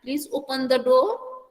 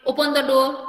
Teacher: okay, लेकिन हम लोग जब कमांड देते हैं ओपन द डोर, तो हम लोगों का ज्यादा वॉइस फोकस ओपन पे रहता है, लेकिन डोर के टाइम वो वॉइस ऑटोमेटिकली डाउन हो जाता है